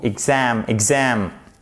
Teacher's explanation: On met bien notre accent tonique sur la seconde syllabe avec un A court.